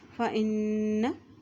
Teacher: जब नून के ऊपर शद आ जाती है तो वहाँ पर गुन्ना अदा किया जाता है